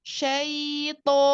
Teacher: huruf lin, harfu lin tidak masuk ke hidung.